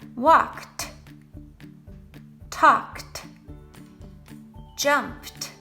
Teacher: the ed ending will actually make the sound of a t